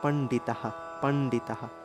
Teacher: বিসর্গের উচ্চারণ হ এর মত যেহেতু বিসর্গের আগের যে অক্ষরটা রয়েছে তার সাথে আকার রয়েছে